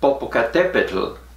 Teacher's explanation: it ends with a tl sound which you don't get in normal spanish